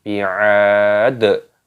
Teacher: huruf dalnya ketika berhenti waqaf, maka di sini dimatikan dan ditambah dengan qalqalah ataupun pantulan suara